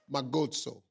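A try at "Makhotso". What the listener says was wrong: The K is silent. Mahotso.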